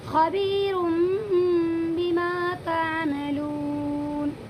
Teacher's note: یہاں پر بھی دو پیش کی تنوین کے بعد یہ با آیا ہوا ہے، اسی لیے تنوین کی آواز کو میم میں بدل دیں گے